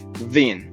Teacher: French bon, where there is no n left to hear, only a vowel pushed through the nose.